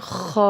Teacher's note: خا کو ہم نے اوپر والے حصے سے ادا کرنا ہے گلے کے